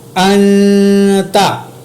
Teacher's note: حمزہ زبر نون ان، تا زبر تا، انتا۔ یہاں پر میں نے نون کے اوپر اخفا کیا کیونکہ نون ساکن کے بعد حروف اخفا ہے